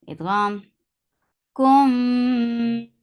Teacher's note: Kum idgham shafawi. So you will keep the sound in your nose for a longer time